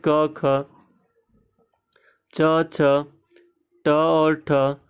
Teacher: जब हम इनको बोलेंगे तो इसमें हमारे मुख से या फिर हमारे स्वर तंत्री से जो है कंपन वो एकदम न के बराबर होता है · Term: अघोष वर्ण